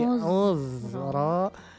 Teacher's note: Auzara tidak dipantulkan, tidak uz, tapi auzara. Hamasnya masih ada.